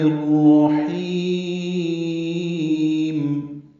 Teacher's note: لمبا کریں گے اور میم ساکن پہ وقف کر دیں گے، تو متعارض سکون بنا کے میم ساکن پہ اظہار ہوگا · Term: اظہار شفوی